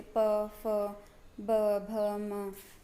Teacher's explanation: तो आपको ये फील होगा कि जब आप इनका उच्चारण कर रहे हैं तो आपके दोनों होठ जो है मिल रहे हैं आपस में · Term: ओष्ठ्य